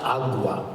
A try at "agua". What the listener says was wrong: It's not agua. Agua.